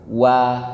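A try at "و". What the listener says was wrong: Wa. Bukan wo. Ya, bukan wo. Nggak ada ya. Adanya huruf wa.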